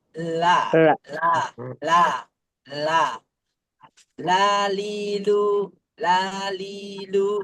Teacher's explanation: nyimpang suaranya keluar dari kanan kiri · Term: menyimpang